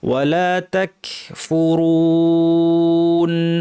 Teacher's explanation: তাক বলার সময় কাফে একটু বাতাস বের হবে।